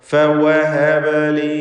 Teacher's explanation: ബത്നു ഷഫത്തി സുഫ്ല മഅ അത്റാഫി സനായ അൽ ഉലിയ, അതാണ് ഫഇൻ്റെ മഖ്റജ്. ഫ ശേഷം ഷഫത്താനി, അതാണ് വാവിൻ്റെ മഖ്റജ്.